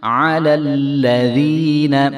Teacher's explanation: عین کی آواز آئے گی اور ہم لام کو لام کے ساتھ ملائیں گے، تو یہ بھی دونوں لام باریک ہی ہیں۔